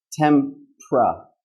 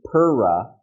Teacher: We don't say pera, we say tempra. We turn this part of the word into a consonant cluster, okay? We're putting 2 consonants together, p and r